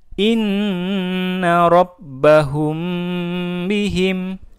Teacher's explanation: Mim sukun bertemu ba juga dibaca dengung